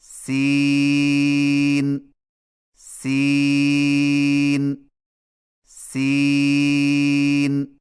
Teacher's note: سین کی ادائیگی میں زبان کی نوک کو ثنایا سفلی کے کناروں سے مضبوطی سے لگا کر باریک اور سیٹی جیسی آواز میں پڑھیں